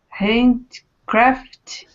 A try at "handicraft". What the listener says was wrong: You're missing the vowel. Handcraft. Or if you say it slowly, handicraft.